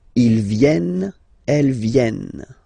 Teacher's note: E-N-T, you don't pronounce them.